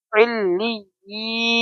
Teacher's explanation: ای کو ہم کھینچیں گے اس لیے کہ یا مدہ ہے